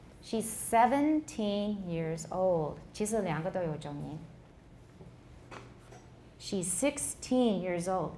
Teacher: if you say years old then they both get stressed